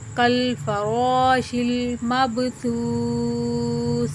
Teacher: سا میں سیٹی کی آواز نہیں نکالنا، سختی سے نہیں پڑھنا، اس کو انتہائی نرم پڑھنا ہے اور بغیر سیٹی کی آواز نکالے اس کو پڑھنا ہے۔ سامنے والے دو دانتوں کے کنارے کے ساتھ جب زبان کا سرا لگے تو سا ادا ہوتا ہے، اس میں نرمی سے پڑھیں گے، اس کو سیٹی کی آواز اس کے اندر نہیں آنی چاہیے۔